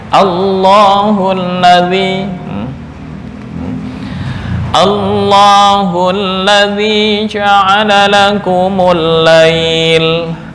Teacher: A tetap tarkik, tapi masuk ke lafdzul jalalah lam ya, ini yang dibaca tafkhim atau taglid.